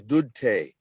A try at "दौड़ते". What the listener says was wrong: Dorte. One word.